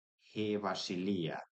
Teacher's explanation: Again, I'm loosening it to not a fricative v, but as an interlabial fricative va, vasilia, vasilia, he vasilia, where this on its own, eta on its own, we're pronouncing as high front, so near close front, but not up to an E level